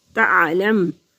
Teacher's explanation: عین حروف حلقی میں سے ہے، تعلم تو حلق کے وسط میں سے ادا ہوگا۔